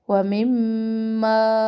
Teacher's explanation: مم مشدد غنہ پر ناک میں آواز ہوگی اور پھر ما پر باہر